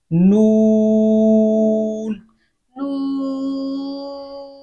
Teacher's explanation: तो इस चीज का आपने ख्याल रखना है। नून, नून को अदा करते वक्त वाव मद्दा की आवाज नाक में नहीं जानी चाहिए।